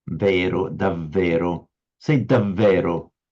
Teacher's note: it's the lower lip against the upper teeth